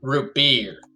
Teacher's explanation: you have to put your emphasis on the last syllable of the word